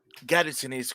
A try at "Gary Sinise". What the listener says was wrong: You say it like it's one word. It almost sounds like you say gas Sinise. Gas Sinise. And I'm like, gas Sinise?